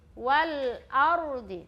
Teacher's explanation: huruf lam itu sifatnya jelas. Tidak dipantul-pantulkan ataupun tidak ada aliran nafas yang mengalir. Jadi ketika kita mengucapkan atau melafazkan itu jangan kasih pantul kamari dia itu. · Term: huruf jahar